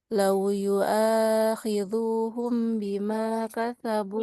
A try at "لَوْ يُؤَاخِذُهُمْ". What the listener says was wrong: Punya nggak panjang? Lau yu'akhidhuhum. Nggak panjang.